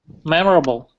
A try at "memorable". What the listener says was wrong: I think it's a little bit more common to kind of get rid of the O sound. So we say memorable. Memorable.